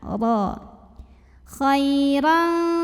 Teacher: Huruf ra dibunyikan secara tafkhim karena barisnya tanwin fathah. maka bacanya tebal, pangkal lidah diangkat.